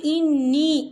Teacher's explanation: نون مشدد ہے تو یہاں پر غنہ ہوگا، اور نی یہاں پر یا مدہ ہو رہا ہے، یا ساکن ہے، یا ساکن سے پہلے زیر ہے، تو ہم اسے 2 یا 3 حرکت کے برابر کھینچ کے پڑھیں گے۔